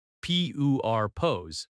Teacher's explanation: Purpose has stress on the first syllable.